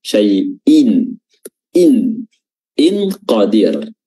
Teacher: ikhfa Hakiki atau samar-samar ya apa yang disamarkan yang disamarkan adalah tanwinnya syaiin in in Qadir ya tapi karena dia bertemu dengan Q